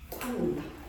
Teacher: 앞에 있는 비읍이 뒤에 있는 니은, 비음에 영향을 받아가지고 비읍이 무엇으로 바뀐다? 미음으로 바뀌는 현상이야. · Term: 비음화 현상